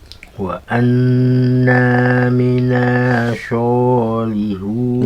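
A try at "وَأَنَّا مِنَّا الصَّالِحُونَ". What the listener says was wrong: Minnanya ditahan dulu. Wa anna minnas.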